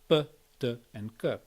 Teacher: what you get there is voiceless unaspirated stops, like in the French p, t, and k, and in many other languages.